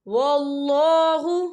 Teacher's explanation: یہاں اللہ کا نام پر پڑھا جائے گا کیونکہ اللہ کے نام سے پہلے زبر ہے